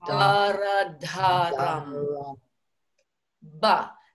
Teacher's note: can you feel that ba initiating at the lips? That is the position 5 sound.